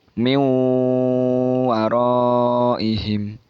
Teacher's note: nun sukun dan tanwin bertemu dengan huruf wawu miuwo arrohim jadi nun sukun Nun nya itu tidak dibaca langsung masuk huruf wawu